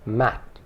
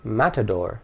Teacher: with the consonant T but that consonant is not explicitly sounded the mouth and tongue get into position for the T but because there is no vowel after it The Sound remains unsaid